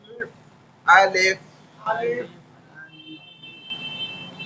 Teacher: مخرج نیچے کے ہونٹ یہ اوپر کے دانتوں کے کنارے سے ٹکرائے گا ایسے, تو فا ادا ہوگا.